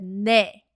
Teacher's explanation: I simplified it by dropping the 받침 and said 네 instead of 넷.